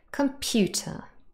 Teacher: computer three syllables and the middle one is stressed